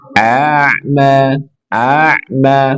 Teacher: Kemudian ada ain sukun, pastikan berikan sifat tawasud atau bainiyah.